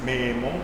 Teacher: Escucho una o que es un poco más cerrada que que la o del Castellano